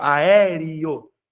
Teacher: aqui eu tenho semivogal I e vogal O